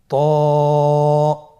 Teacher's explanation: জিহ্বার আগা, সামনের উপরের 2 দাঁতের গোড়ার সঙ্গে লাগিয়ে উচ্চারিত হয়।